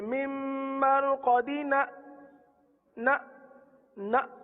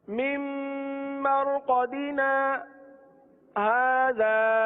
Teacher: अच्छा, करते क्या है, यहाँ झटका दे देते हैं ना, जैसे मिम मरकदीना ना ना, तो ना झटका नहीं देना, ना के बाद थोड़ा सा रुक जाए और हाजा पढ़ने। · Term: सत्ता